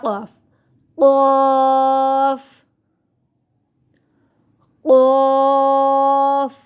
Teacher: زبان کی جڑ. زبان کی جڑ کا آخر جو کوے کے پاس ہے جب اوپر کے تالو سے لگے تو قاف ادا ہوگا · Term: موٹا قاف